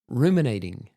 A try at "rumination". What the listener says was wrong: Rumination. The emphasis on the wrong syllable.